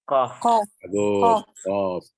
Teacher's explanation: Pangkal lidah menyentuh lelangit berdaging.